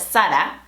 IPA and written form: ˈsa.ɾa (Zara)